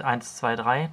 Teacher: wenn man zählt 1 2 3 dann liest man sie im ersten Ton